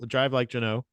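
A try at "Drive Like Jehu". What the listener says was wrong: There's no N in that word. There's no N. There's no N. Jehu. I don't even know if Jehu's the right pronunciation. those sounds, In the sounds of Jehu, there is a Jehu.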